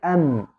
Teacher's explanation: the mim is done from the lips, but it takes its characteristic, which is the nasalization, from the nose